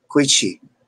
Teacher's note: is not always a true she or sh sound it's actually between the c h and s h · But what is often recorded as a she, in many places is not always a true she or sh sound. It's actually between a ch, ch, and a sh, she. So it's quichi, like a mixture of the two.